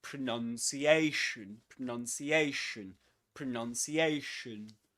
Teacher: pronunciation is a double stressed word. Which means that there are two accents, two accented syllables. The one carrying the main accent is this one.